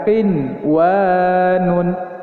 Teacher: kita dilarang untuk mendengungkan dan menahan bacaan tersebut karena ini hukumnya adalah idzhar wajib